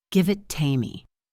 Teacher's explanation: The V connects to it, and the T at the end of it combines with to make a ta sound